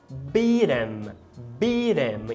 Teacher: Você vai perceber que aqui é uma átona, logo beat 'em, beat 'em. Então, o fato da gente ter tido um H-dropping, ou seja, o apagamento do H, vai fazer com que você possa dar o flapping, fazer a chibatada no T do beat. E aí você fala beat 'em.